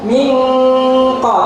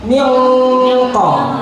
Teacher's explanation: Ikhfa'nya qaf ditebalkan ya, tidak mingqa tapi mingqa. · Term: sifat isti'la'nya qaf